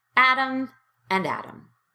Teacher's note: If you have one of the accents of the United Kingdom, you're probably not saying atom and atom the same way that an American speaker does. Americans turn T in between two vowels into a very light D sound. So the name atom and atom as in the smallest unit of an element, atom, are pronounced exactly the same way.